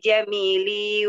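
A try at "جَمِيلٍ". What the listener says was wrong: Afwin jamilin, yaitu kasroten itu ya. Jadi tetap dibaca kasroten ya.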